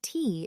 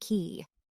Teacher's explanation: my tongue tip went up to the bumpy spot instead of my tongue tip going down and the back of my tongue raising up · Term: t or d sound